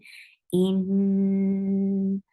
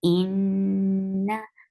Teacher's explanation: This is where you're applying Kunna. You are keeping sound in your nose for a longer period of time.